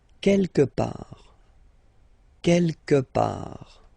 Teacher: Don't pronounce the final T.